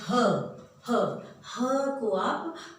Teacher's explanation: ह को आप जब ह भी बोलेंगे तो देखिए आपके हाथ में गर्माहट महसूस होगी, हवा रगड़ खाती हुई निकलती है, जिससे हमें गर्माहट सी महसूस होती है। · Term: ऊष्म व्यंजन